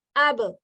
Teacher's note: This is thick sounding letter. It is sakin, it's huruf qalqalah, so you're going to bounce it.